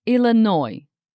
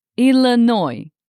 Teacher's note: So now we have Illinois with a silent s. Don't say Illinois.